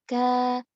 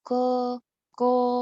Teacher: Kalau kaf, ka melandai suaranya. Ka memenuhi bagian mulut yang di bawah, bergemanya di bawah.